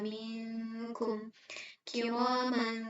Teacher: Nah, cara melafalkan ikhfa ab'ad untuk huruf kaf yaitu sama seperti tadi, mempersiapkan pelafalan pada makhraj huruf kafnya, kemudian mengalirkan suara gunnah sempurna secara tarkik atau tipis. Ketiga, mengalirkan suara dari mulut terhalang oleh pangkal lidah, menyerupai suara eng pada bahasa Indonesia.